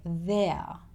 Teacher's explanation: Australians don't tend to say the letter R at the end of words. So he doesn't say there.